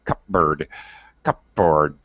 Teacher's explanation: now we commonly don't even pronounce the P. Well, it's very difficult, if not impossible, to pronounce P and B together.